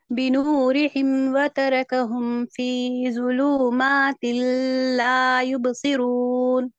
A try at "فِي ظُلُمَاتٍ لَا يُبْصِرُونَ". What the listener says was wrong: لام کھینچے گیا، لام متحرک ہے، متحرک کو کھینچتے نہیں، ذلو بول کے کھینچے گیا، اور تل نہیں پڑھتے اس کو، تلا یبصرون، تلا نہیں، لا یبصرون، الف مد ہے نا یہاں پہ.